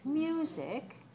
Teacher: For example, when I say music, you're going to write 2, because it has 2 syllables, dash 1, because it's stressed on the first syllable